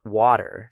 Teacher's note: one of the most distinctive and recognizable features of American pronunciation, the flap T